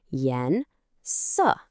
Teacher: A rising second tone followed by a falling fourth tone. Yen su. It goes up and then it goes down. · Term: rise and fall melody